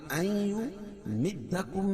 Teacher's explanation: نون ساکن کے بعد ادغام مع الغنہ کے 4 حرفوں میں سے یا ہے تو یہاں غنہ کر کے پڑھیں گے